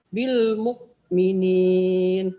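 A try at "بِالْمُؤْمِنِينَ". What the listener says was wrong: Jangan bil mok. Jangan mok. Jangan ada kaknya, ingat ya. kayak ngomong gini Bu, kalau tulisan bapak kan ada kaknya bapak, tapi bacanya bapak, jangan bapak bil, bu, jangan ada kaknya ya Bu ya.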